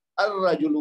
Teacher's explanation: حمزۃ الوصل کو را مشدد سے ملا کر پڑھیں گے